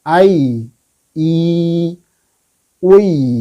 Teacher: Jadi ketika kasroh ketemu ya tidak ditekan i, tapi i panjang